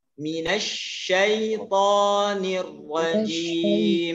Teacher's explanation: Pertama dia ada tasydid nih. Ya, dalam bahasa Aus dia ketemu tasydid huruf shinnya. Maka anginnya menjadi lebih kuat.